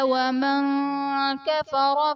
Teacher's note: ومن کفر میں نون ساکن کے بعد حروف اخفاء میں سے کاف آ رہا ہے تو یہاں پر اخفاء کا قاعدہ ہوگا، یعنی نون ساکن میں ہم غنہ کر کے پڑھیں گے